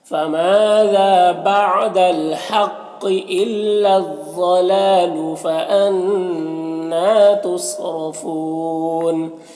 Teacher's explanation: صاد حروف مستعلیہ میں سے پر پڑھیں گے، را کو پر پیش ہے، را کو بھی پر پڑھیں گے، اور یہاں پر وقف کی صورت میں مد عارض وقفی ہوگا تو اس طرح سے پڑھیں گے۔